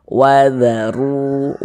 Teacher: maka huruf ra-nya dibaca tebal, dibaca tafkhim, sehingga pangkalisan kita naik terangkat ke atas ketika kita mengucapkannya.